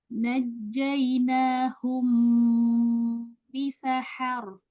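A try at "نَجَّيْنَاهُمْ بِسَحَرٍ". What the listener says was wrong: Bisa har. Rohnya jangan buru-buru dilepas. Ada tawasud ya.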